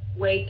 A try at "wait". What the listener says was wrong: Nếu không có cái âm T thì nó ra cái con đường đó. Nó ra cái chữ Wait Nó ra cái chữ Nó ra cái chữ này wait, không phải là wait mà là wait.